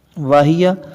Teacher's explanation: تو حلق کے آخری حصے سے ہا کو ادا کریں گے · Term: اقصی حلق